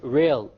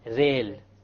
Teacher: The English R comes from the middle of the tongue. Whereas the Arabic rah comes from the tip of the tongue along with the incissors or the gum behind the incissors.